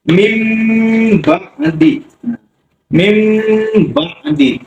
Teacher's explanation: Nah, bacanya harus dengung. Mim, nah, nggak perlu ditekan antara bibir atas sama bibir bawah. Dikasih nafas sedikit, nggak perlu ditekan. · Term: iqlab